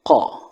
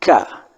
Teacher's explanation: qa itu di betul-betul di kerongkongan bawah, qa. Kalau ka agak ke atas, tengah-tengah.